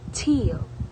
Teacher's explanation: l is an alveolar lateral approximate because the tongue contacts the alveolar ridge while air flows around the sides of the tongue.